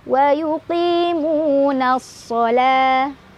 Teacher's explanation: Ada alif lam syamsiyah karena ada alif lam bertemu huruf syamsiyah yaitu shad. Cara bacanya masukkan langsung ke huruf shad, alif lamnya nggak usah dibaca. · La mad dhabi'i karena ada fathah berdiri di atas huruf lam. Cara bacanya dibaca panjang 2 harokat. Nah, waw setelahnya dianggap nggak ada ya.